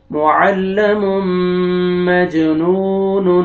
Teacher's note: ٹھیک ہے اس کے آگے میم مشدہ متحرک آئے گا تو میم کو آپ نے میم کے ساتھ آپ نے ادغام کرنا ہے اس کے ساتھ اس کے اندر داخل کریں گے اور غنہ کے ساتھ ادغام ہوئے گا آگے جیم قلقلہ حروف قلقلہ میں سے ڈبل ساؤنڈ آئے گا